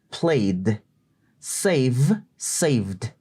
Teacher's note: ese Ed se pronuncia como una d una d seca